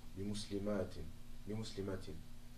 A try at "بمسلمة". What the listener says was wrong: Oui, parce qu'il n'y a pas d'alif. بمسلمة.